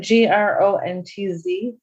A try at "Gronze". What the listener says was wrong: Drop the T. Gronze, Gronze.